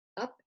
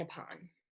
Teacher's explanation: That is a short U and it is stressed.